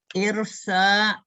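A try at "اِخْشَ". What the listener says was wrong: Ikhsha. Gak ada huruf ra. Gak ada huruf ra di sana. Ikhsha.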